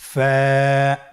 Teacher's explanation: ফা হরফটি উচ্চারণের ক্ষেত্রে বারিক হবে এবং এক আলিফ টেনে পড়তে হবে।